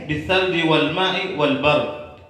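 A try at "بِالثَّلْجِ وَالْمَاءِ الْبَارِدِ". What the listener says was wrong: Bukan wal bard, bil ma'il bard. Ya, bithalji wal ma'il bard kan gitu.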